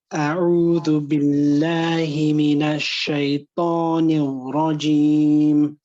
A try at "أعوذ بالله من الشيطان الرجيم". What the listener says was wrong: Okay, shaytan. Shaytan. You're pushing it out too hard. Relax it a bit. The bar.